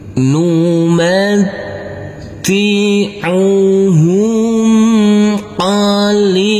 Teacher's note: Tanwinnya kita baca dengan samar-samar dan kita dengungkan. Pada waktu berdengung persiapan masuk ke huruf sa. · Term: ikhfa